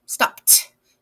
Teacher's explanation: It's that ed turns into a t sound